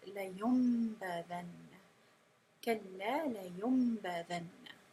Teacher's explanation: not only are you transforming that noon into a meme sound, which is the iqlab, you also have the ghunna